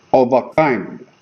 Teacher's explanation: Of and a is unstressed. Kind is stressed. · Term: Anapest